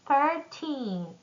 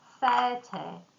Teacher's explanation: teen numbers stress at the end, like 13, and tens stress at the beginning, like 30